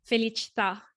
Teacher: these words have the accent right on the last last syllable that final a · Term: accented a